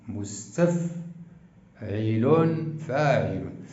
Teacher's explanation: النبر يقع على المقطع الاحادي الثاني